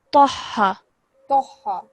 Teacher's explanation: ta is a thick and heavy sound, and then we're joining it to the ha